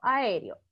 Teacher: Entonces, el acento cae en la E y ahí es tónica. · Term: Sílaba tónica